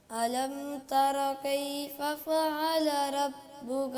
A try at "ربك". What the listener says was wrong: را کو موٹا پڑھیں، فعل ربک، ربک، ربک، ربک،